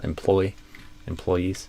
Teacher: But I usually say employees with the stress on the second syllable.